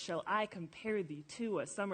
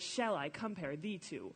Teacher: And every single line has 10 syllables, and every line also follows the pattern of an unstressed syllable followed by a stressed syllable followed by unstressed. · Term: meter